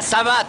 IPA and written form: saˈvat (Savate)